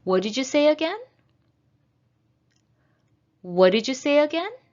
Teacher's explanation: is a rising intonation even though it's a wh question